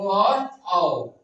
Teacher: आवाज आया कंठ से और आप बोले तो आपका ओठ क्या हुआ? गोल हो गया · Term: कंठोष्ठ वर्ण